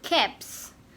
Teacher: show this we should automatically pluralize the word cap as caps the voiceless consonant p is followed by voiceless consonant s